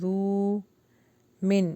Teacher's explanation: یہاں پہ اظہار ہوگا یعنی غنہ نہیں ہوگا